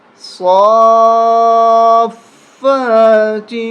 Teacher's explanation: صاد، فا، کھڑا مد زبر صافا، کھڑا زبر فا، فا کے اوپر تشدید بھی ہے اور صاد کے اوپر کھڑا زبر اور مد، اس کو کھینچنا بھی ہے اور اس کے ساتھ ملا کے سختی کے ساتھ بھی پڑھنا ہے، اور پھر فا کو بھی کھینچنا ہے، فا کے اوپر کھڑا زبر ہے۔